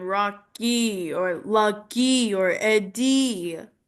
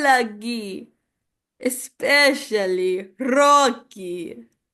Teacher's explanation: the elongation of the E sounds